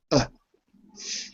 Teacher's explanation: this is similar to uh like Duck but it's shorter and it's really in your throat rather than your mouth